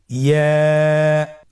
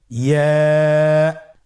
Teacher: ইয়া উচ্চারিত হয় জিহ্বার মধ্যখান তার বরাবর উপরে তালুর সঙ্গে লাগিয়ে উচ্চারিত হয়। আমরা জিহ্বার মধ্যখানটাকে উপরে তালুর সঙ্গে লাগিয়ে উচ্চারণ করি ইয়া।